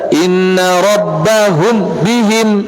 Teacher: Gunnahnya tetap terjaga, tidak dibaca idhar. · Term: ikhfa Syafawi